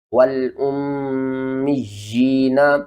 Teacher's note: اس طرح میم یا زیر می، یا کھڑی زیر جی، والأمی، یا کو آپ نے نیچے کی طرف کھینچنا ہے ایک الف کے برابر